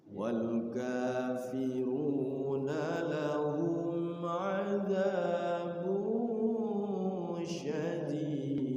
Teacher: Harus ada d-nya, mantulnya. Nah, namanya qalqalah.